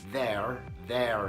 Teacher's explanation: my accent is non-rhotic that means I don't pronounce that are sound at the end